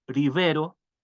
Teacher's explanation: la otra que quería mencionar es la la r esperant que siempre suave incluso a comienzo de palabra